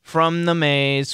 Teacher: They'll be calling 911 from the maze, and here that M is going to kill that TH, and what we have is we get this from the M kills the TH, it actually converts to an N